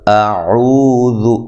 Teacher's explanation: حمزہ کو تحقیق سے پڑھنا ہے، او واو مدہ ہے، ذال کو باریک پڑھنا ہے، لمبا نہیں کرنا.